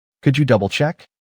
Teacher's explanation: Notice the intonation. Check goes up like a question. That rising tone makes it sound polite, not demanding.